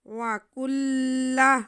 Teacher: کاف کو لام کے ساتھ ہم ملائیں گے کیونکہ لام مشدد ہے، لیکن کھینچنا کسی کو نہیں ہے